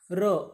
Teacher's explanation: अब ये र जो है मूर्धा से निर्माण होता है, इसी कारण इसको बोलते हैं मूर्धन्य